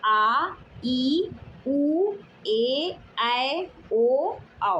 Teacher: इन स्वरों के उच्चारण में ह्रस्व स्वर से दो गुना यानी दो मात्राओं का समय लगता है। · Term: दीर्घ स्वर